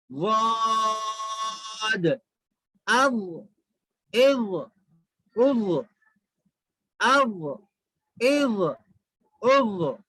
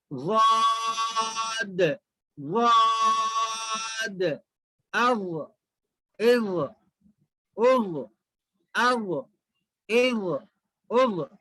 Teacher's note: یہ ضاد جو ہے زبان کی کروٹ کو اوپر کے داڑھوں کی جڑ سے لگانے سے ادا ہوتا ہے. زبان کی کروٹ, زبان کو تھوڑا سا ٹیڑھا, یہ پلٹائیں گے زبان کو.